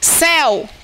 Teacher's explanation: a vogal ela é mais longa do que a semivogal então desce o o a pronúncia Ok mas Deus Deus deixa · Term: ditongo aberto e decrescente